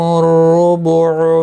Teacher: الرُّبُعُ را پر پڑھا جائے گا پیش کی وجہ سے